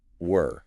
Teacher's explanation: But were is tighter. Your lips round much more, and the vowel is trapped right in the center of your mouth, rhyming with fur.